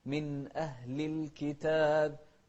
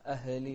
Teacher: توضح الهمزة وما تقلقل الهاء